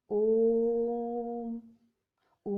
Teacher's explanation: तीसरा प्रकार है प्लुत स्वर। प्लुत स्वर वे स्वर होते हैं जिनके उच्चारण में ह्रस्व स्वरों की अपेक्षा 3 गुना अधिक समय लगता है। अर्थात इनके उच्चारण में सबसे अधिक समय लगता है।